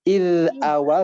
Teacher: Ditahan ya, ditahan ujung lidahnya. Iz awal tanpa ada pantulan.